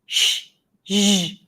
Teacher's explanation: Okay, let me show you again. That's behind the ridge. Fricatives, partial block, noisy